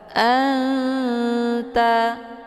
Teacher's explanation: Mana aqrab itu dekat antar makharijul huruf nun dengan ta, posisinya saling berdekatan. Cara bacanya, nunnya disamarkan kemudian siap-siap menuju ke huruf ta. Anta. Jadi nun ini bagaikan bacaan yang digantungkan kemudian mau baca huruf ta. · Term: ikhfa aqrab